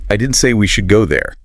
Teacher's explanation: Let's move the stress to the auxiliary verb should.